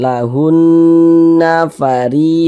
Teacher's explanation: Kita baca lahun. Hunnya itu kita tahan, kita panjangkan sejenak, kita gunnahkan. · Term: didengungkan